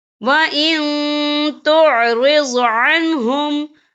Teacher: وَإِن تُعْرِضْ عَنْهُمْ، یہ دیکھیں وَإِن، یہاں نون ساکن ہے، نون ساکن کے بعد جو ہے تا آ رہا ہے اور تا جو ہے اکفا کا ورڈ ہے، تو ہم یہاں اکفا کریں گے، نون ساکن کی آواز کو ناک میں چھپائیں گے